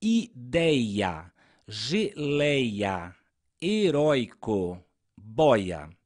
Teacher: as palavras são paroxítonas ou seja a sílaba tônica é a penúltima